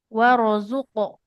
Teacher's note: Di sini huruf ro-nya tebal, qafnya memantul.